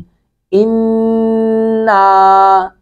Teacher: नून मुशद्दत पे गुना करेंगे